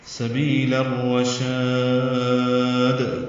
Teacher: سبیل میں بھی یا مدہ ہے، لام کو الرشاد کے را سے ملا دیں گے، سبیل ہو جائے گا، ادغام شمسی ہوگا. را پر پڑھیں گے، شین کو لمبا کریں گے اور دال ساکن پہ قلقلہ کریں گے وقفن